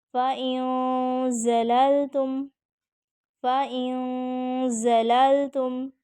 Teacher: فَإِن زَلَلْتُم میں زا پہ سیٹی جو ہے وہ واضح کریں گے